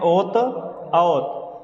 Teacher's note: ओ और औ, इन दोनों का उच्चारण स्थान क्या होता है, कंठोष्ठ। कैसे समझना, हमने कहा कि ये ओ मिलकर बना किससे है, तो आ प्लस ऊ से।